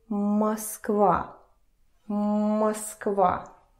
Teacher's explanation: Russian O, when it is unstressed, where there is no stress and no accent going on it, it turns to the sound E. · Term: vowel reduction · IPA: [məskva]